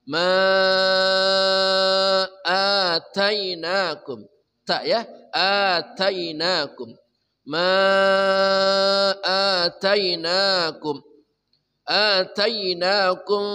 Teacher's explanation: empat harakat namanya mad jas munfasil